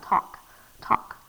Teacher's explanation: the l and the k together it's very slick you almost don't even hear the l